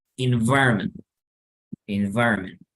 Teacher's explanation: Si quieren, busquen esta palabra y entonces esto es in, la V endolabial, inva, inva, environ, environ, environment. Y la T no suena.